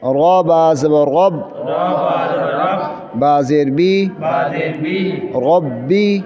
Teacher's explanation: را کو موٹا کرنا ہے، پر کرنا ہے، اس لیے کہ را کے اوپر زبر ہے، را کے اوپر زبر ہے، اس وجہ سے را کو پر کرنا ہے، موٹا کرنا ہے۔